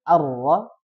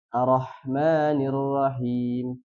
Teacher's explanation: di huruf ro yang harusnya dibaca arra dia langsung arrahmanirrahim ya Jadi harus ada tasdidnya harus dibaca tasydidnya yaitu ditahan dua harakat